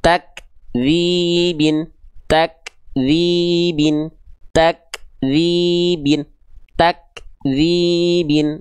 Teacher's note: Kaf ada percikan nafasnya tapi enggak bukan berarti berlebihan. · di huruf kaf dia punya sifat namanya hams. Terpercik nafas. Ada keluar percikan-percikan nafasnya.